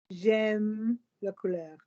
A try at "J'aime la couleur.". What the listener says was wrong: Listen to the words I'm saying. J'aime la couleur. You don't stop. J'aime, pause, la couleur. Vowels from the end of one word are going to slide into vowels at the beginning of the next word. Don't be interested in the M and the L. It's the air from M into the A of la.